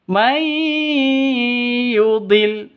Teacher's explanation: Cara bacanya masuk ke ya disertai dengung 2 ketukan. Kenapa? Karena idgham bi gunnah.